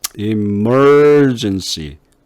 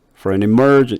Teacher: for an emergency 여기서 an emergency 이렇게 안 하고 for an emergency 그죠? an emergency 거의 어자 중성모음으로 바꿔요. for 같은 경우도 없애버리고 중성모음으로 바꿔봐요.